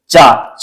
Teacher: च वर्ग का जो उच्चारण स्थान है च छ झा ये किससे हो जाएगा तो तालू से हो जाएगा · चा जब आप बोलेंगे तो आपकी जो जीभ है आपके तालु को जब तक स्पर्श नहीं करेगी तब तक आप चा नहीं बोल सकते।